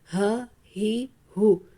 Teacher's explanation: حمزہ ہا گلے کے نیچے والے حصے سے ادا ہوتا ہے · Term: اقصی خلق